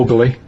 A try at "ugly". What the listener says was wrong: It's an extra syllable in the word ugly.